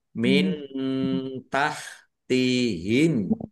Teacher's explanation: Taj taj qalqalah tajri ro kasrah ya sukun mad thobii panjang dua harakat min tahtihim nun sukun bertemu dengan huruf ta bacaan ikhfa dibaca samar-samar